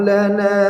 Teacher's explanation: Lana, nanya dipanjangkan 2 harakat.